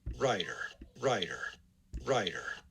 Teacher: there is stress transcribed on the first syllable